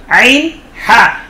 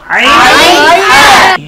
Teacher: কণ্ঠনালীর মধ্যখান থেকে, হলকের মধ্যখান থেকে 2টি হরফ উচ্চারিত হয়